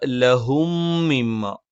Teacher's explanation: സുക്കൂനുള്ള മീമിന് ശേഷം മീമ് വന്നു. ഇദ്ഗാമാണ്, മണിച്ചുച്ചരിക്കണം.